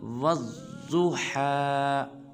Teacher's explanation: واو کو ضاد مشدد کے ساتھ ملائیں گے اور ضاد کو پر ادا کریں گے اور پڑھیں گے والضحیٰ۔